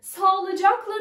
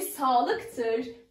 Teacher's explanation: K düştü. Düşen ses ünsüz. Ünsüz düşmesi.